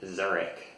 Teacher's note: in English, it's usually Zurich with a k sound instead of the sh sound, which we don't really have in English.